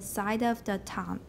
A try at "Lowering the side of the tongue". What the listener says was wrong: That was good. Rhythm-wise, you missed an S.